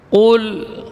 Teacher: Maka ketika sukun dia tetap mengalir sebagian dari suara. Dan yang tebal di sini hanya huruf qaf. Kalau lamnya tetap dibaca tipis.